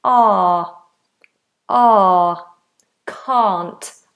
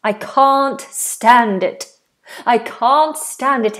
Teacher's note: I do know why we don't say can't we say car nice open vowel the tongue is flat big space a a two fingers a a can't I can't stand it